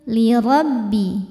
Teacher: ro dibaca tafkhim karena berharokat fathah, maka ro-nya tebal.